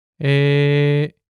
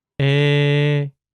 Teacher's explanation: While these two vowels had distinct sounds in the past, these days they are pronounced basically the same.